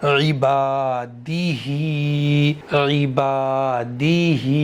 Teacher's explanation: दाल को मैं नहीं खींचूंगा, हा को एक अलिफ के बराबर खींचूंगा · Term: खड़ी जेर